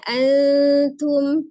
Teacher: Ikhfa-nya kecil saja ya, bertemu dengan ta, menyerupai makhraj huruf ta ya. Antum, tapi ditahan tetap 2-3 harakat.